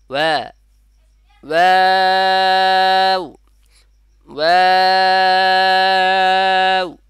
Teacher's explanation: তাহলে ওয়াও বলার সময় দুই ঠোঁট থেকে উচ্চারণ হবে, ওয়া হবে, ওয়াও না, ওয়া, ওয়াও, ওয়াও।